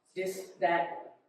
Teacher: the TH, the hard TH, is a D sound.